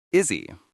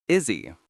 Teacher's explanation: When we speak naturally, the s sound in is connects to the e sound in he. The h vanishes. It sounds like the name iszy. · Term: h drop